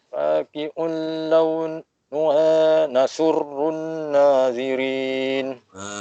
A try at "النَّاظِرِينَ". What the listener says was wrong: Cuma nazirin tu kalau boleh tebalkan sikit. Nazirin. Tebalkan. Cuma kalau dapat tebalkan lagi sikit cantik sebab dia huruf za. Nazirin. Jangan nazirin. Zirin sama zirin lain. Zirin boleh jadi huruf zai.